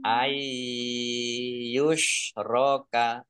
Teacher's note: Idgham masuk bi dengan gunnah mendengung, masuk dengan mendengung, yaitu masuk langsung ke ya nunnya, nun sukunnya tidak dibaca. Ai, nah, biar mendengung maka harus ditahan, ditahan ya. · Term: idgham bi gunnah